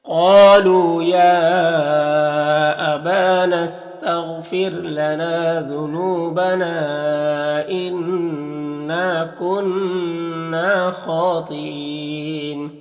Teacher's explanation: خا اور تا یہاں پر دونوں حروف مستعلیہ میں سے پر پڑھیں گے۔ خا میں کھڑا زبر ہے جو الف مدہ کی طرح ہوتا ہے، اور یہاں پر بھی وقف کریں گے تو مد عارض وقفی ہوگا، تو اس طرح سے پڑھیں گے۔